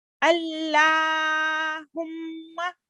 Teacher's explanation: لام الجلالہ سے پہلے الف حمزہ پر فتح ہے، تو پر کر کے پڑھیں گے، موٹا کر کے پڑھیں